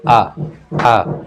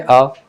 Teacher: अपेक्षा देखो अ बोले हैं अ अब आ बोलते हैं आ आ अ से थोड़ा ज्यादा समय ले रहा है ना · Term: दीर्घ